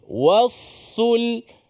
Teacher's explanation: pastikan ada sabdu bukan sekadar huruf yang dah tebal dah tapi ada sabdu juga